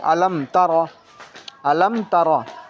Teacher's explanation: मीम साकिन के बाद ता आ रहा है। तो अब होठों को जल्दी जुदा कर देंगे। मीम पर ही जुदा कर देंगे।